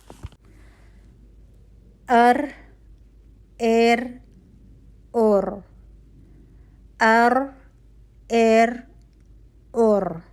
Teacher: हर्फ र का मखर आमा है अलिसान और मखर खासा है तरफ उल लिसान · अब आपको इसके रॉ की आवाज़ सुनकर आवाज़ अर वाली आवाज़ आ रही होगी, ठीक है। रॉ में आपको आवाज़ का दोहरा होना महसूस हो रहा होगा।